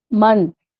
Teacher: यानी हम जब हुना करेंगे तो आवाज जो कहां जाएगी? नाक में जाएगी। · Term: तनवीन